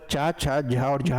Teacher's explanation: उनकी जो ध्वनि है वो स्पर्श करने के साथ ही जो संघर्ष है वो भी उत्पन्न होता है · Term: स्पर्श संघर्षी व्यंजन